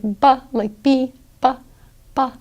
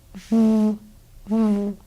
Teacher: you're not using both lips like ba, like B, ba, ba, you're using instead one lip and your teeth